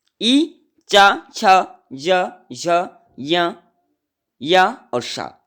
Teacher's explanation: इन वर्णों को बोलते समय हमारी जीवा अग्रभाग ऊपर भाग यानी तालु पर स्पर्श करती है। ई, च, छ, ज, झ, य और श, ये 8 वर्ण जो है इनका उच्चारण स्थान तालव्य माना जाता है, यानी तालु माना जाता है।